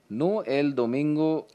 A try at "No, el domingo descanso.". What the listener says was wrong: No comma है, सांस ले।